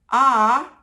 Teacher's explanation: the mouth has opened completely so this is a low or open vowel